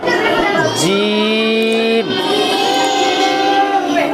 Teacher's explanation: जबान का बीच और उसके मुकाबिल ऊपर का तालु, ये लग रहा है इसमें, ऊपर लग रही है जबान जाके।